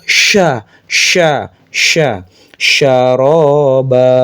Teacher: Nah, nama sifatnya tafasyi. Tafasyi itu menyebarnya nafas ke seluruh ee bagian mulut. Jadi, sya itu harus keluar napas banyak.